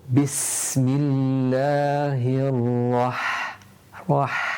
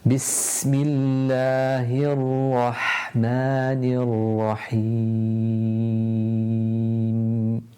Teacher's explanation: breathe out with a little burst of air, which makes the ha a lot more audible